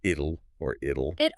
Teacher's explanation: It's not a sharp tez sound anymore. Your tongue quickly taps the ridge behind your teeth, the alveolar ridge, making it sound more like a soft D. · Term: alveolar tap